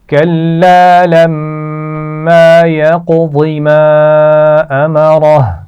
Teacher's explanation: كلا لما يقض ما أمره کلا الف مدہ ہے، لما میم پر غنہ ہے اور اس کے بعد الف مدہ ہے. یقضی قاف پر قلقلہ ہے اور ضاد کو موٹا پڑا جائے گا. ما امرہ میم پر چھوٹی مد ہے تو اس کو تھوڑا سا کھینچ کر پڑھیں گے، اور امرہ را کو موٹا پڑا جائے گا.